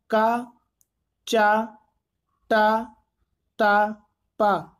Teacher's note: तो का आपका कंठ होता है, चा का उच्चारण स्थान तालु होता है और टा का आपका मूर्धा होता है।